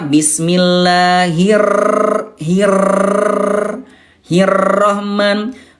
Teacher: huruf r-nya terlalu bergetar ya